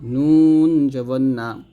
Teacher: নুন জিহ্বার আগা তার বরাবর উপরে তালের সঙ্গে লাগবে